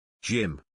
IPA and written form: dʒɪm (Gym)